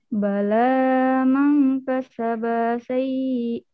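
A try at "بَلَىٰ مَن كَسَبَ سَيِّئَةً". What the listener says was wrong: Bala mubasharatan bidun mad. Bukan mad, bukan mad. Bala man.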